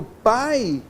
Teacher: que é um ditongo decrescente oral, por quê? A vogal a é oral